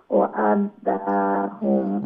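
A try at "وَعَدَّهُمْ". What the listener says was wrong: ওয়া'আদা, দা লম্বা হবে না, ওয়া'আদাহুম, দাহুম এরকম, ওয়া'আদাহুম হবে না।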